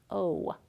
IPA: oʊ